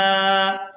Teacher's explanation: तनवीन के फ़ौरन बाद बा आ गई है तो नून की आवाज़ को मीम के साथ बदलेंगे और इसको कहते हैं इकलाब करना।